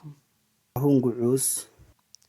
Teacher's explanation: It contains the central pharyngealised vowel ʉ.